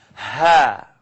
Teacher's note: It's coming from the first part of my throat.